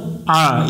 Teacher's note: আইন জবর আ এটা একটু গলা চেপে উচ্চারণ করতে হবে